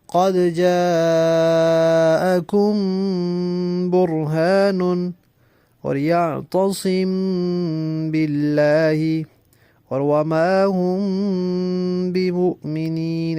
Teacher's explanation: جب میم ساکن کے بعد با آ جائے تو آواز کو ناک میں چھپائیں گے اور اس میں دیر بھی لگے گی جب ناک میں آواز جائے گی، تو اسے اخفاء شفوی کہتے ہیں.